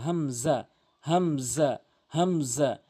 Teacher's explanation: আইনের জায়গায় হামজাইন উচ্চারণ করে। এটা হামজা হলকের শুরু থেকে।